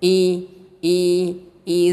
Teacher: huruf alif ini terletak di tenggorokan yang paling jauh